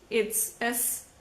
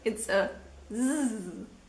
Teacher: in Wasser, it's a s, or in Hase, it's a z